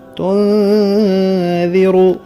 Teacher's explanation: انما تنذر، یہ بھی ذال ہے، دانتوں کو ملنے نہیں دینا، اوپر نیچے کے دانتوں کے درمیان زبان کی نوک دانتوں کے کنارے پر آئے گی۔